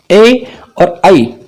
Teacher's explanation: ये कंठ और तालु के सम्मिलित प्रयास से उच्चारित होते हैं। तो यहां पर कोई नया उच्चारण स्थल नहीं आया है, पहले वाले ही उच्चारण स्थल हैं, लेकिन अब वो संयुक्त रूप से एक साथ आने लग गए हैं।